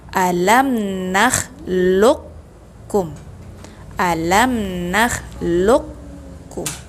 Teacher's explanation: Sebenarnya suara dia adalah aq, tetapi sebab masuk ke dalam hukum idgham mutaqaribain bertemu dengan kawan dia atau huruf hijaiyah yang sifat dan makhrajnya berdekatan, maka qalqalahnya jadi hilang, tidak menjadi.